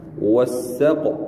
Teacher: Qaf dia qalqalah suqra, dia qa sikit gitu